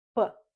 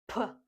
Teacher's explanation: It's when you breathe, when you say P with some breath. But when we say P, we mostly use our voice. P, so it's more voiced. Whereas in English, there is more breath.